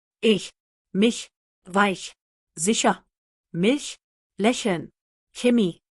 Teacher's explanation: Produced with the middle of the tongue close to the hard palate. Sounds like the H in the English word huge. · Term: Palatal C sound